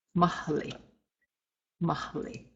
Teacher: the H and the L are sounded separately